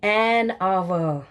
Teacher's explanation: And what about आवर. H silent है, sound ओ की है, so it is एन आवर.